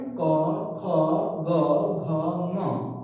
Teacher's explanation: अ आ कवर्ग ह और विसर्ग का उच्चारण स्थान कंठ है